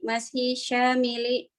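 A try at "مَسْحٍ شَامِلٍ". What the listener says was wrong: jangan takut sama tanwin. Mas syamilin bertanwin, Bu. Dia sifat dari mashin. Ijra majrur karena ada ba. Mashin majrur karena mudhaf ilaih. Syamilin naat kepada mashin, maka dia bertambah 3.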